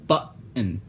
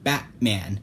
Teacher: When you produce this sound, you stop the airflow by putting your vocal folds together. You'll hear this when you say the double T in button.